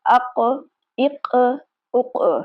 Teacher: یہاں پر قاف کو ہلا کر پڑھیں گے کیونکہ قاف قلقلہ والے حروف میں سے ہے۔ ساکن صورت میں قاف پر قلقلہ کر کے پڑھیں گے۔